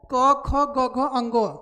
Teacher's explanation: क ख ग घ अंग एक एक कंठ से बोला जाता है